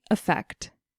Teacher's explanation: With this word, we hear the stress on the last syllable